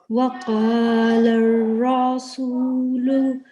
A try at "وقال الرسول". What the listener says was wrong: Okay, don't prolong this raw. Try again.